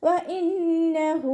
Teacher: ഇനി നമ്മളവിടെ ശ്വാസം കിട്ടാതെയൊക്കെ വഖഫ് ചെയ്യുകയാണെന്നുണ്ടെങ്കിൽ മീമിന് ഹാഫ് സുക്കൂനാക്കിക്കൊണ്ട് വഖഫ് ചെയ്യും. വ ഇന്നഹു വാവ് ഉച്ചരിക്കുന്ന സമയത്ത് ചുണ്ടുകളെ വട്ടത്തിൽ പിടിച്ചു കൊടുക്കുക.